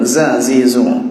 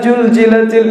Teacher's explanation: cinta Belum sadar Bangka sudah kita Jelaskan izazu situsari ini maksudnya di ujung lidah yang diletakkan di belakang gigi seri bawah dan suaranya agak tajam